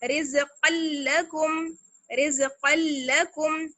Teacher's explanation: रिज़्क़ल्लकुम, इसको हम ऐसे नहीं पढ़ सकते, रिज़्क़ल्लकुम ऐसे नहीं पढ़ सकते इसको, ये गलत हो जाएगा। बिल्कुल साफ आवाज में डायरेक्ट काफ को लाम से मिलाएंगे · तो जब हम काफ को लाम से मिलाएंगे तो जो तनवीन की साउंड है वो बिल्कुल खत्म हो जाएगी